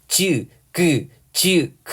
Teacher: 지보다 조금 더 뒤쪽에서 소리가 난다는 건 어느 정도 느낄 수 있을 거고요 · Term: 연구개음